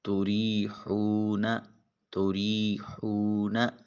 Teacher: واو ساکن اور اس سے پہلے والے حرف ہا کے اوپر پیش، واو مدہ ہے، اس کو بھی ایک الف کے قیم مقام لمبا کر کے ادا کریں